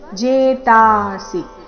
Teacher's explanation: ಜೇತಾಸಿ ಸಿ ಮಾತ್ರ ರಸ್ವ